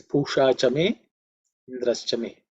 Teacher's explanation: In terms of pronunciation, just pay attention to the sh, which is a cerebral sh. The tongue should be pointing towards the roof of the mouth.